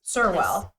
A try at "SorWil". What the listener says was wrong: SorWil. You kind of give the accent to it.